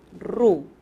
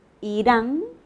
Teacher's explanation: la primera es la vibrante múltiple, ru. Irán, ¿cómo suena? A una vibrante simple.